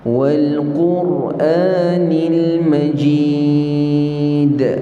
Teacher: Panjangkan ya dulu, kemudian berhenti, baru kita lantunkan dal. Dal ini qalqalah kubra.